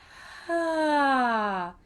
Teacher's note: So we want to try to avoid the soft and the hard and go for a balanced onset. So a soft onset would be when we say things like ah, where the air precedes the sound. And we don't want to start with too much air because then the sound ends up being full of air and very thin, as opposed to a hard onset.